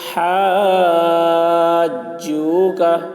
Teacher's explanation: مد لازم کو 3 یا 4 الف کے برابر کھینچ کر پڑھیں گے